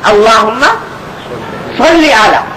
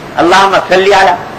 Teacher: صاد ذرا موٹا کر کے نکالا جاتا ہے، سین ذرا اس میں موٹا نہیں ہوتا